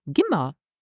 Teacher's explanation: Okay, but gin, here we drop the final N because of our N rule. And in spoken Luxembourgish, we don't stress here mir, but we would use ma instead of mir